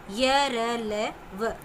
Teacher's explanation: जिन व्यंजनों का उच्चारण करते समय जिह्वा पूरी तरह मुख के किसी भाग को नहीं छूती वे अंतस्थ व्यंजन कहलाते हैं। स्वर व व्यंजन के बीच या मध्य का उच्चारण इनका होता है।